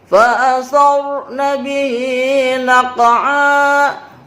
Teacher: ra ada sukun diawali dengan huruf berbaris fathah, disebut ra tafkhim, tebal dia.